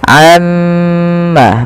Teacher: kita harus menahan bunyi suara mim yang berharakat tasydid karena dia termasuk daripada bacaan ghunah. Nah, ini jangan kita langsung baca amma yatasaalun, tapi tahan dahulu ghunahnya atau bunyi suara mimnya sepanjang dua harakat.